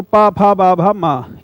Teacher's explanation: पा में दोनों ओंठ स्पर्श हो रहे हैं, तो पा फा बा भा मा, ये ओंठ के इस कार्य करने से ही बोलते हैं, इसलिए इनका उच्चारण स्थान ओष्ठ है।